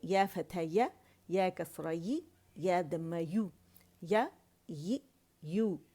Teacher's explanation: زبان کے وسط سے ادا ہوتا ہے